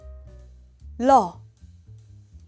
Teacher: Consonant 리을 is not a nasal sound. The air flows through your mouth. With the tip of your tongue, touch your upper front gums and make a sound as you remove the contact.